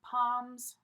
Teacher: notice the L in palm is silent